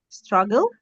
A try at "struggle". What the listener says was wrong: Struggle. Okay, good.